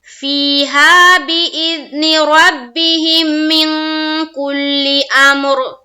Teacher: را کو ہم پر کریں گے یعنی کہ ہیوی بنائیں گے